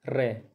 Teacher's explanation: 2-3 बार जीभ ऊपर नीचे लग के, मतलब हिल के, उसके बाद पूरे वर्ड की साउंड आती है रे। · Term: लुंठित या प्रकंपित व्यंजन